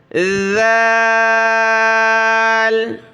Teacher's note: زبان کی نوک باہر نکالیں، نرمی کے ساتھ ادا کرنا ہے